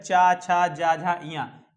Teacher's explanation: तो हमारा चा वर्ग जो है, चा छा जा झा इया, ये है हमारा तालव्य, यानी तालू, तालू से टकराती है